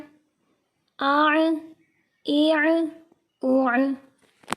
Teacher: عین کا ساؤنڈ نکالیں گے حلق کے درمیانی حصے سے